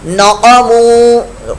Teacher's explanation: نقموا قاف پر موٹا اور واو مدہ